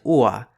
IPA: ua